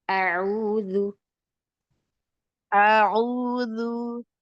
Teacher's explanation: untuk hamzah pertama, buka fathah sedikit lebih lebar